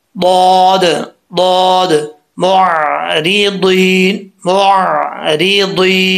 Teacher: तो ये ज़ुबान ऊपर की तरफ उठेगी, तो ये दौद पढ़ा जाएगा फुल माउथ, ठीक है। कैसे?